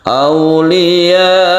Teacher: Kemudian disukun. Karena sukun maka dia itu menjadi mad arid lisukun. Ketika sukun jadi ini boleh sampai 3 alif. Aulia.